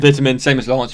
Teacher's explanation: there is the fact that I pronounce the T and most of you guys don't. You guys meaning Americans.